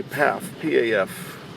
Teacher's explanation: they've silenced the first F, and phonetically they would just say Pfaff